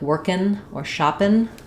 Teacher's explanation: the front of your tongue is lifting, like the n sound